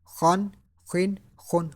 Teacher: Kha is pronounced from top part of throat.